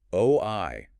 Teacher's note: You hold that initial O like rounding as the tongue travels forward from the back a position to the front eye position where the lips finally relax.